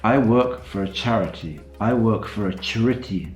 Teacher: I take this dress and put it on the final syllable you can hear that I'm reducing the other syllables because that's the way English stress tends to work